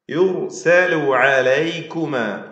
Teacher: യുർസലു റായിന് തഫ്ഹീം കൊടുക്കുക